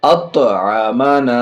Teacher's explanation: طا حرف قلقلہ میں سے یہاں بھی آواز لوٹے گی